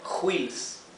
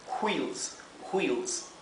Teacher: La W con la H, la W y la H, se pronuncia en inglés como si fuera una bocanada de aire o de viento, ¿verdad? Como si fuera un viento que pasa.